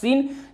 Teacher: सनाया उलिया और सनाया सुफला के दरमियानी हिस्सा से ये सीन, जा और सीन और सौद तीनों हरफ निकलेंगे